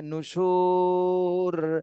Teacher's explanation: সুতে তিন আলিফ টান দিতে হবে আর রতে জম দিতে হবে